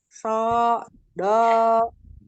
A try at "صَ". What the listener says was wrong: Tidak di koma, tidak so, tapi so. Angkat pangkal lidahnya. Jadi tidak dengan memonyongkan bibir so begitu tidak, tapi dibuka so dibuka. So, tapi pangkal lidahnya naik. Pangkal lidahnya naik. Oh, kan ada asofirnya, gitu ya. Tekanin.